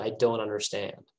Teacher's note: american people sometimes don't pronounce t after remember our previous lessons so they just go i don't